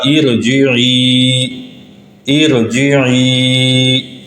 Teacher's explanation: عارضی زیر کے بعد را ساکن ہو تو اس کو پر پڑھا جائے گا، یہ ہو جائے گا ارجعی، ارجعی۔ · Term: را پر پڑھنے